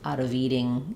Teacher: the V is going to link to the next sound and I won't drop it